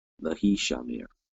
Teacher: Now you're just adding a lamed preposition, the lamed with the shewa. So a very quick E class vowel sound coming off of that. So lehi shamer is how you would pronounce this.